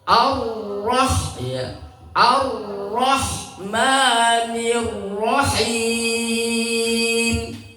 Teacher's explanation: Ro itu sifatnya takrir di antaranya takrir itu artinya lidah bergetar tapi getarnya tanpa ulang. Tidak boleh rnya getarannya lebih dari tiga getaran.